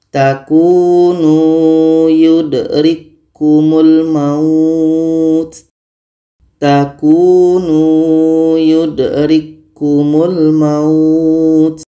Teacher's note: bertemu dua huruf yang sama maka k ini sudah sempurna masuknya ke huruf k yang kedua kita baca takunu yudrikumul maut takunu yudrikkumul maut k sudah sempurna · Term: Idam mutamasilin, idgham mutamathilain